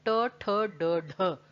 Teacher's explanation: ट बोलने के लिए आपको अपनी जीभ मोड़नी ही पड़ेगी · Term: मूर्धा